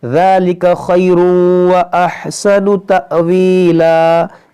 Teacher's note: یہاں پر حمزہ ساکنہ ہے تو جھٹکا ہوگا